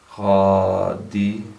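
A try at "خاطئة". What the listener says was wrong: No, it's not va.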